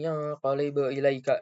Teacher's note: pada ayat ilaika terdapat mad lin karena adanya ya sukun yang didahului oleh huruf yang berharokat fathah dan cara baca diwajibkan lunak atau lembut